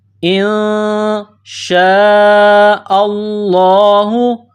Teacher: حمزہ کو نون کے ساتھ پلس کرنا ہے، نون ساکن ہے. نون ساکن کے بعد شین ہے، حروف اخفا ہے تو غنہ کیا جائے گا، آواز ناک میں چھپائی جائے گی